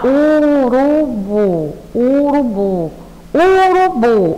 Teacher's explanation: a gente percebe que a nossa pronúncia mais forte é a sílaba bu, urubu, bu, urubu. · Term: sílaba tônica